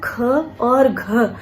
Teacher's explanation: प्रत्येक वर्ग का द्वितीय और चतुर्थ वर्ण जो है, जैसे कि हम क वर्ग की बात करें तो ख और घ जो है वो महाप्राण व्यंजन है